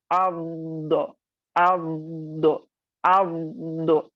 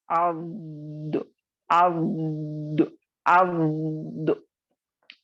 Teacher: आपको जबान को बिल्कुल सामने यानी दाल के मखरज पर नहीं लाना है, बल्कि पीछे ले जाना है, और इसको थोड़ा यानी आपको पीछे से एलिवेट या उठाना है और आपको इसके मखरज को लगाना है, जैसा कि अब्दो अब्दो अब्दो। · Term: दौद